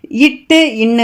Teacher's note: இட்டு இன்னு அப்படின்னா நாவின் நுனி மேல்வாய் அன்னத்தின் நுனியை பொருந்துவதால் பிறப்பது